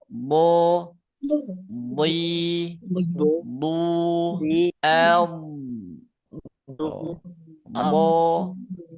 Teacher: huruf dad keluar dari tepi atau sisi lidah bagian kiri atau kanan atau juga keduanya dengan menekan gigi geraham atas · latihannya do di du ya. Jadi mulut mulut bibir enggak usah ikut campur karena bukan makhraj bibir tapi makhraj lidah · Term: huruf Dod